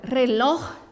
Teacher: la última sílaba es la fuerte, pero no termina em NS o vocal, por isso não lleva tilde, tá bem?